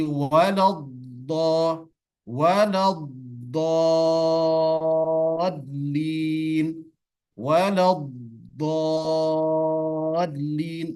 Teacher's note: Jadi tidak boleh langsung dilepas, tapi harus bergesekan antara tepi lidah, tepi pangkal lidah ke geraham atas kanan dan kiri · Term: sifat istitolah